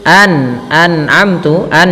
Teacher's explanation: jangan sampai nunnya memantul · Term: izhar